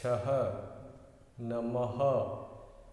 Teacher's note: यानी अह में लास्ट में ह स्वर का उच्चार होता है। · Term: अह स्वर